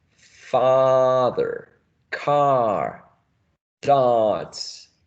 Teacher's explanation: your tongue goes down goes very very low right very low and back when you say car car you should feel the tongue at · this ah is a low vowel sound and it's also a back lower vowel sound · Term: low back vowel sound